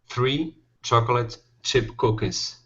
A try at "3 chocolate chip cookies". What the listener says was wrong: Okay, now in this word here, the O is not pronounced. So instead of saying chocolate, it's chocolate. 3 chocolate chip cookies.